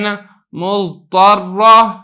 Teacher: یہ جو ضاد ہے یہ بھی حرف مفخم ہے اور تا ہے یہ بھی حرف مفخم ہے